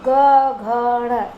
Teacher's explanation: और जो ग, घ, ण, इनमें कंपन अधिक होता है। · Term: सघोष